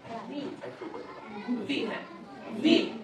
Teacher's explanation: নিচের ঠোঁটের ভিতরের দিকে উপরের দাঁতের একদম নিচের অংশটা লাগবে নিচের ঠোঁটের ভিতরের দিক কোনটা এই জায়গাটা হ্যাঁ এই জায়গার মধ্যে